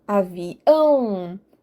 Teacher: É o ão que eu dou ênfase quando eu pronuncio a última sílaba mais forte. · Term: oxítonas